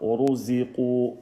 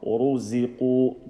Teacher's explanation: Uruziqu, don't stretch the z. Uruziqu, and stretch the waw.